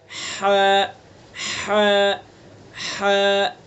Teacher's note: हा का मखरज है वस्त हल्क, यानी हल्क का दरमियानी हिस्सा। हल्क के दरमियानी हिस्से से, बीच वाले हिस्से से हा को अदा करेंगे।